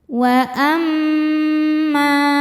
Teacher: Sebab mim bertasydid. Cara membacanya didengungkan. Tahan dengungannya kurang lebih dua harakat. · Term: ghunah musyaddadah